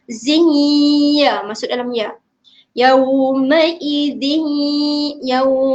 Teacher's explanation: Memasukkan ataupun kita menghilangkan bunyi nun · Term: idgham ma'al ghunnah